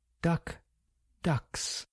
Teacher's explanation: K is voiceless and S is voiceless.